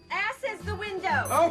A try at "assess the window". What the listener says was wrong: It's assess the window, not ass is the window. You put the wrong emphasis on the wrong syllable.